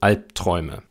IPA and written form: ˈalp̚tʁ̥ɔɪ̯mə (Albträume)